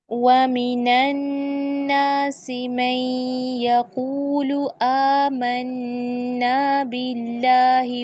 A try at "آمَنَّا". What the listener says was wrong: تھوڑا کم کھولیں، منہ بڑا نہیں کھولنا. آمنا ایسا نہیں، آمنا جتنا کھلتا ہے اتنا، ٹھیک ہے.